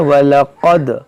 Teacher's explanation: क़ाफ मोटा करें, दाल में क़लक़ला करें